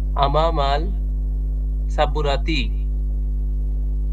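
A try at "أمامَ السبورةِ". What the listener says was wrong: আমামাল সাবুরাতি তো কখনো হওয়ার কথা না। সিন যুক্তে যদি আসে হবে। আরে আমামাস সাবুরাতি।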